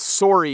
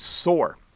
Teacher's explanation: so the word sore and the word sorry have the same o sound when we pronounce them in canadian english